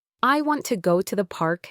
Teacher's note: Listen to how I say it, paying attention to the small ways words connect. the slight stress on park and the voice going down at the end of the sentence